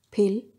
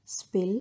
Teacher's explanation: Pa sound is aspirated. In contrast, spill is unaspirated, or you can say unstressed.